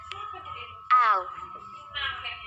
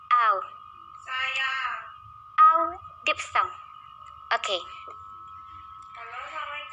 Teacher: a glide to uh would necessitate a large movement and the tongue often does not reach the uh position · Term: diphthong